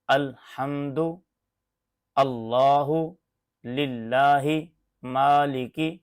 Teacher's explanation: जुबान की करवट से नोक तक का हिस्सा जब सनाया रुबाई इनिया और जवाही इन चार दांतों के मसूड़ों से लगे तो यहां से लाम अदा होता है